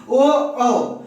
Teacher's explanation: उसके बाद अगला सूत्र है ओ दैतो कंठोष्ठम, ओ कंठोष्ठ, कंठ और ओष्ठ, कंठ और ओठ दोनों का प्रयोग करेंगे।